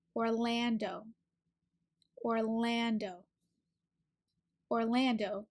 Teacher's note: that R to it or Lan is the second syllable so for the L your tongue is behind your top teeth pull and this a sound is ah like apple it's open · this a sound is ah like apple it's open in the back